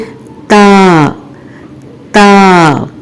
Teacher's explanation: اور پھر اس کے بعد آخری حرف تا، تا بھی یہیں سے ادا ہوگا، یعنی زبان کی نوک اوپر والے دو دانتوں کی جڑ سے لگے گی اور باریک آواز میں ادا کریں گے